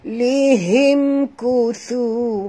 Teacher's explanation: Mim mati bertemu kaf. Tak boleh dengung. Izhar syafawi.